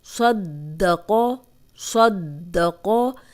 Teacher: مضبوطی اور جماؤ سے پڑھنا ہے۔ دباؤ اس کے اوپر آئے گا، شد والے حرف کے اوپر۔